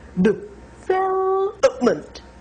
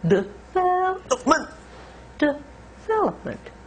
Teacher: Vel is long, and then up is once again short with schwa, and so is ment. We have three schwa sounds.